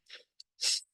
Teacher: S is a voiceless alveolar fricative